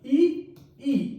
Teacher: जिह्वा टच नहीं कर रही है तालु को, लेकिन तालु की तरफ जा रही है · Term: तालव्य स्वर